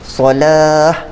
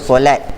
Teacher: ta ni asalnya ta marbutah, kita tukar dia bunyi ha. Okey, solah tak baca dengan solat.